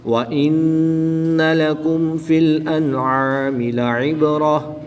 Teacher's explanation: را کے اوپر زبر ہے اس لیے را کو پر یعنی موٹا پڑھیں گے